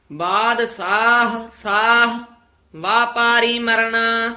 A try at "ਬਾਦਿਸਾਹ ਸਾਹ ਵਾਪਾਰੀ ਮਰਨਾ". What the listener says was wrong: ਹਾਂ ਇਸੇ ਤਰ੍ਹਾਂ ਵੱਧ ਕੰਨੇ ਨਹੀਂ ਲਾ ਦੇਣੇ। ਬਾਦਸ਼ਾਹ ਸਾਹਾ ਨਹੀਂ ਕਹਿਣਾ। ਬਾਦਸ਼ਾਹ ਸਾਹ ਇਸ ਤਰ੍ਹਾਂ ਵਿਸਰਾਮ ਇੱਥੇ ਲਾ ਦੇਣਾ।